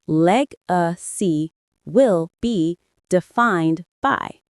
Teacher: The stress is on the first syllable of legacy and the second of defined.